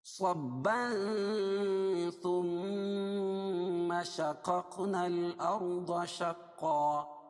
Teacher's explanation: ثم میم مشدد ہے اس لیے غنہ ہوگا. شقق یا قاف پر جزم ہے اس لیے یہاں پہ قلقلہ ہوگا.